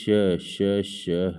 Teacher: उच्चारण अवयवों की परस्पर समीप होने से श्वास का घर्षित होकर निकलना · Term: संघर्षी व्यंजन